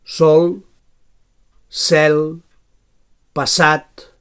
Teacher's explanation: So alveolar fricatiu sord.